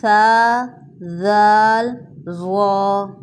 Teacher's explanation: جب ہم اپنی زبان کی نوک کو ثنایا علیہ کے کناروں کے ساتھ ٹچ کرتے ہیں تب 3 لیٹرز ادا ہوتے ہیں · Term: مخرج